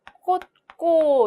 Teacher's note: 지읒 뒤에 이어진 기역이 된 소리로 발음이 된 것을 살펴볼 수 있고요